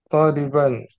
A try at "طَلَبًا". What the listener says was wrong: Tolaban, bukan toliban. Tolaban.